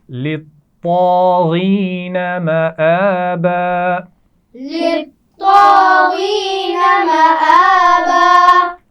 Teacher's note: للطاغین، طا بھی موٹا پڑھا جائے گا اور غین کو بھی موٹا پڑھیں گے